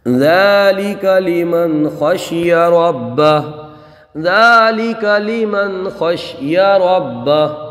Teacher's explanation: ذال کو ایک الف کھینچ کر کے پڑھیں گے، نون ساکن میں اظہار ہوگا، خا کو پر پڑھیں گے، با کو جماؤں کے ساتھ پڑھیں گے اور ہا کو ساکن کر دیں گے۔